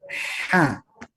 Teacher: kemudian naik dikit penyempitan tenggorokan